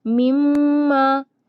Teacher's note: میم پر مشدد ہے یعنی یہاں پر بھی غنہ ہوتا ہے